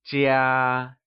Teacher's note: The word home translates to 家, and it is pronounced using the high level tone.